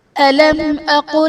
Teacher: علم اقل میں میم ساکن کے بعد حرف با اور میم کے علاوہ حمزہ ہے تو یہاں بھی اظہار شفوی کا قاعدہ ہوگا، یعنی میم ساکن میں ہم غنہ نہیں کریں گے۔